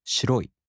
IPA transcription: shiroꜜi tokei